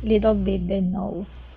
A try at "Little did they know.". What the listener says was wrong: That's it. Okay, really good.